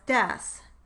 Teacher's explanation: In stop replacing a glide, a stop consonant is substituted for a target glide consonant. For example, a child who applied the phonological process of stop replacing a glide might produce the target word yes as des.